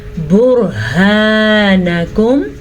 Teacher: रॉ साकिन से पहले हर्फ के ऊपर पेश है तो रॉ साकिन पुर पड़ी जाएगी इस पेश की वजह से। ہا کے تلفظ کا پھر سے دھیان رکھنا ہے.